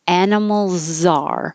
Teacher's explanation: the S is really a Z sound that connects to the A